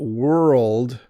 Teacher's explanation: we've put an R and an L and a D beside each other with no vowel in between them. So it becomes a little more challenging.